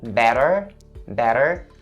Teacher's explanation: I turned the T in the middle into a flap D sound